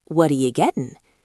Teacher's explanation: The T in what hit the Y in you and became a ch or a soft J sound.